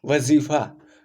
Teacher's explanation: जब नुक्ता लग जाता है तो इसको हम गले से इसका उच्चारण करते हैं, कंठ के बजाय गले से उच्चारण। जैसे वजीफा, जोर देकर गले पर इसका जब प्रोनाउंसिएशन करते हैं तो नुक्ता के संदर्भ में होता है।